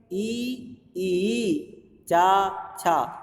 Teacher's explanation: ई ई चा छ म पूरा च वर्ग र और श ये सभी हमारे कहां से बोले जाते हैं तालू से बोले जाते हैं